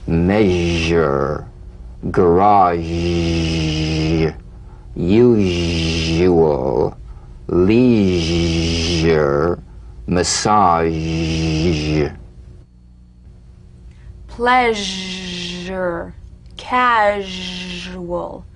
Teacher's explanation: and add vocal resonance all suggestion of the sh must vanish feel the sh overridden by the deep rumbling vibrations of the zh resonating against the teeth and the tip of the tongue · Cognate, the voiced tongue blade S sound consonant. Make the whispering SH and add vocal resonance. All suggestion of the SH must vanish.